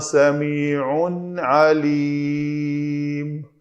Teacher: تنوین کے بعد عین ہے تو یہاں پہ ہم نے اظہار کیا